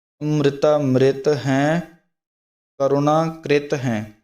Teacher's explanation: ਅੰਮ੍ਰਿਤਾ ਐੜੇ 'ਤੇ ਥੋੜ੍ਹਾ ਜਿਹਾ ਦਬਾਅ ਦੇ ਕੇ, ਜਿਸ ਨਾਲ ਟਿੱਪੀ ਦਾ ਜਿਹੜਾ ਉਚਾਰਨ ਸ਼ੁੱਧ ਰੂਪ ਵਿੱਚ ਹੋ ਜਾਵੇ